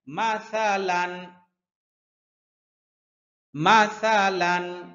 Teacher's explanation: মাসালান, জিহ্বার আগা সামনের উপরের দুই দাঁতের আগার সাথে লাগবে। মাসালান, গুন্না নাই, লানে কোনো গুন্না নাই।